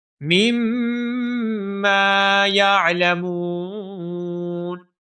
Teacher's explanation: یعلمون میں جو میم ہے اس میم کو بھی ہم ایک الف کے برابر لمبا کریں گے کیونکہ یہاں پر واو مدہ ہے